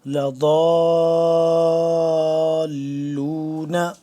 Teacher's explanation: جب بھی یہ شد آ رہی ہے تو اس کو ہم جب جوڑیں گے تو تھوڑی دیر روک کے رکھیں گے آواز کو